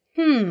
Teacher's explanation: the first character is in a very low tone fourth tone